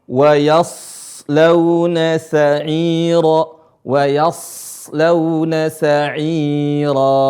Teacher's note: Tidak dibaca sa'iran. Ketika berhenti sa'ira, dibaca 2 harokat. Bacaan 2 harokat, dan ini disebut dengan mad iwad, dan merupakan bagian dari mad tabi'i atau mad asli.